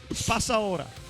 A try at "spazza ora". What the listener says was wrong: Spazza ora. Spazza ora Z singola, spazza ora. È vero, non è la spassa ora.